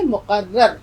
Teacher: قاف کی آواز حلق سے نکالیں گے